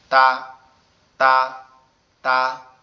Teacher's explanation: জিহ্বার আগা সামনের উপরের দুই দাঁতের গোড়ার সঙ্গে হালকা একটু টাচ হবে, হয়ে উচ্চারিত হবে তা, তা, তা।